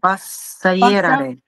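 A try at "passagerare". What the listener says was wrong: Пассахераре. Там «хэ» юдови. Пассахераре.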